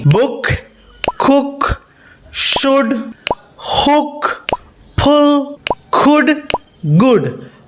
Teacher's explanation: It's short and quick. For example, book, not book. Your lips slightly rounded, not tight.